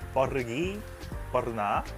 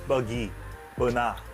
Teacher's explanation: Malaysia Hanya cakap pergi benar seperti ini di dalam pendapat saya Indonesia menekan R sound dan orang Malaysia tidak menekan R sound